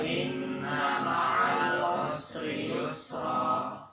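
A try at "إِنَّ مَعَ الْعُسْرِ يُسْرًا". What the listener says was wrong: Lamnya juga jangan dipantulin semua. Ma'al jangan. Ingat, lam itu bainiyah, tawassut, ada pantulannya dikit.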